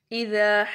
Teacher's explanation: ذا کو لمبا کریں گے، ٹھیک ہے. ذا کیا ہے؟ الف مدہ ہے، یہاں پر الف سے پہلے زبر ہے.